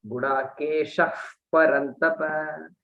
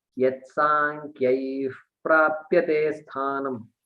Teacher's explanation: The visarga becomes an F. Sounds like an F. It's like adding a letter F there. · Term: Upadmaniyaha